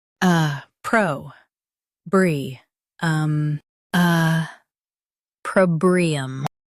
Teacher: Emphasize pro and keep brium light.